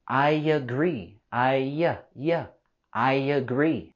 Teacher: With these two words, I agree, we can link them together with the y sound.